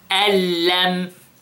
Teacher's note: we merged the noon in the lam without any seconds. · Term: إدغام بغير غُنَّة